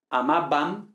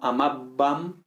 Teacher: Con esta B cerrando totalmente los labios